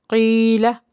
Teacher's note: اس کے ساتھ یا ساکن ہے اور یا ساکن سے پیچھے زیر ہونے کی وجہ سے ایک الف کے برابر کھینچ کے ادا کریں گے۔ قیلہ، لام کو نرمی سے ادا کریں گے، اس کے بعد پھر لام ہے، دونوں لام کو باریک پڑھیں گے۔